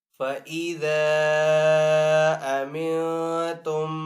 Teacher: سے یہاں پہ جو مد بنے گی وہ مد منفصل ہوگی، مد منفصل کو 3 سیکنڈ کھینچ کر ادا کریں گے ، فَإِذَا أَمِنْتُمْ فَاذْكُرُوا اللَّهَ، را کو پر پڑھیں گے کیونکہ